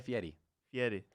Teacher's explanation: it's called an alveolar trill, and it's kind of a fancy name for rolling your R's